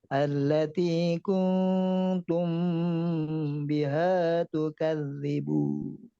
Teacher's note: waktu nun ketemu ta ikhfa. Jadi harus dipanjangkan 3 harokat.